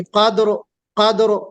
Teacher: कद्र कहते वक्त दाल में थोड़ी सी जुंबिश पैदा होगी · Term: कलक, कलकला